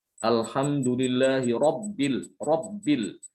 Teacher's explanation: Hati-hati terutama ketika ba-nya itu dalam keadaan tasdid ya. Benar-benar harus diingat ba tidak boleh dikeluarkan dari rongga hidung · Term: huruf ba